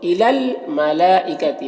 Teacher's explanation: ملا میں جو مد ہے مد متصل ہے، اسے 3 سے 4 الف کے برابر کھینچ کر پڑھتے ہیں